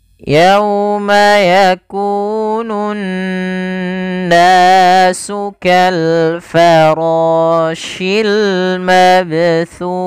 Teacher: Pada bacaan yauma lembutkan dalam lafal yauma karena di sini ada bacaan lin.